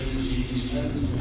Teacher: هذه الجيم صارت رخوة ما معنى رخوة؟ يجري معه الصوت. ومعلوم أن الجيم حرف شديد.